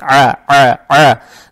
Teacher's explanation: Здесь буква «айн» гортанная с фатхой. Фатху произносим через гортань, то есть «а», «а», «а».